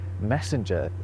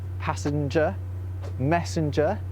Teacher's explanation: people start putting this nasalized mhm sound where it previously wasn't. Specifically, they're putting it before a g.